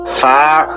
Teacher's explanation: উপরের দাঁত আগা নিচের ঠোঁটের পেটে লাগবে। ফা এরপর মুখ খুলে যাবে।